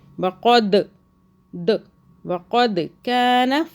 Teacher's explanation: دال پہ قلقلہ چٹکے سے پڑھیں گے